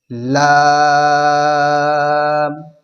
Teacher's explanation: لام کا مخرج ہے زبان کا کنارہ اور اوپر کے سامنے والے اوپر کے 8 دانتوں کے مسوڑوں سے ادا ہوتے ہیں